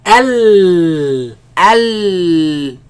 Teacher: The sound escapes on the sides. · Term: lam